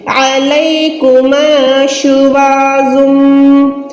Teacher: یرسل علیکم، عین کو حلق کے درمیان سے ادا کریں، لام کو یا کے ساتھ ملا کے حروف لین. یا ساکن سے پہلے زبر ہے تو یہ حروف لین ہے، یعنی اس کو نہ لمبا کریں نہ ہی کم رکھیں، اس کو نارمل رکھیں. · اب میں زم کیوں پڑھ رہی ہوں؟ کیونکہ دو پیش کے بعد یہاں پر میم ہے، میم مشدد ہے، تنوین کو میم کے ساتھ ملائیں گے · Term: ادغام